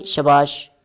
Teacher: we pronounce all the syllables with the same Force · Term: syllable time